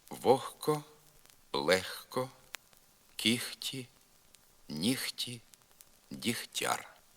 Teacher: гандж звук г в літературній мові знеголошується і нерідко оглошується тобто заступається звуком Х тільки в словах вогко легко кіхті ніхті дігтяр